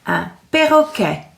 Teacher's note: the R sound is quite tricky, isn't it, in French? R, from the back of your throat.